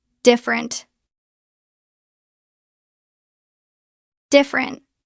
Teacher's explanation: Drop the first e. It becomes different. two syllables.